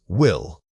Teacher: Saying this word requires immediately rounding your mouth for the initial W and then dropping into the clear L's.